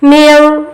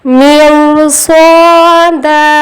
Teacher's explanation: روائے ساکن سے پہلے زیر ہے، لیکن روائے ساکن کے بعد حرف مستعلیہ صاد آیا ہے، اس لیے رو کو موٹا پڑھیں گے. میو، می بولنے کے بعد ہونٹ گول کریں گے. روائے ساکن کی موٹی آواز آئے گی.